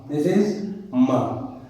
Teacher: for the production of ma we involve what? We involve we involve both lips, but this is nasal sound because you can feel that the air may be, this is nasal.